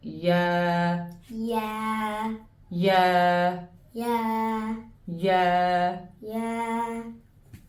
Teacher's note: the ya sound comes when the middle of the tongue touches the palate